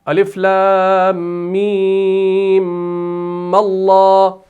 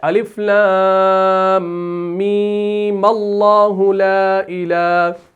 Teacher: اس میم کو جب آپ پڑھتے ہیں نا, کیسے پڑھیں گے, میم, لیکن اس کے بعد والا جو میم ہے نا, بعد والا, پہلا والا نہیں, شروع والا نہیں, بعد والا جو میم ہے نا اس کو مشدد نہیں کرنا, یہ بالکل غلطی ہے